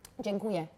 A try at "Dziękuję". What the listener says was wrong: Dziękuję. Dziękuję. Dziękuję. Dziękuję.